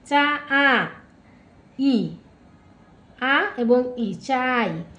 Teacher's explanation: এখানে আ হলো পূর্ণ স্বরধ্বনি ই হল অর্ধ স্বরধ্বনি